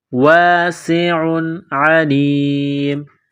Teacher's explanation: تنوین کے بعد عین ہے، حروف حلقی ہے تو تنوین پر غنہ نہیں کریں گے